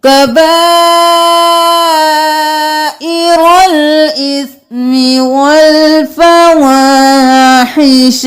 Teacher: سورۃ الشورى آیت نمبر 37 کبائر الاثم، کاف زبر کا، با کھڑی زبر مد با، 5 الف کے برابر با کو کھینچیں گے، حمزہ زیر ای، را زبر لام رول، ای رول، جلدی سے.